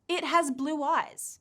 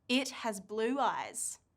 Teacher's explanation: a w sound comes out of nowhere in between the two words · Did you hear the appearance of the W sound again?